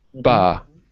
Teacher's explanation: this is a voice consonant. Your vocal cords are moving.